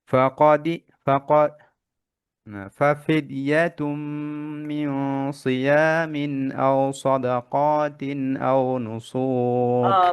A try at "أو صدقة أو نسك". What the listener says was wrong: সাদাকাতির মাদ হয়ে গেছে । أو صدقة أو نسك